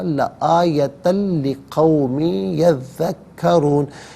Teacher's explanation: لقومن کی لام کے ساتھ ملائیں گے اور لام کی آواز کو ادا کیا جائے گا۔ یہاں یرملون کا قاعدہ اپلائی ہوگا، لآیتن لقوم یذکرون۔